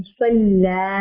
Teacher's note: स्वाद को मोटा पढ़ेंगे, लाम को नहीं. सल्ला, लाम पे आवाज हम अपनी बड़ी कर दें.